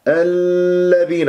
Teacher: الذين اللام اسمية مدغمة مرققة، لا تطل جريان الصوت فيها، لا تصبح رخوة.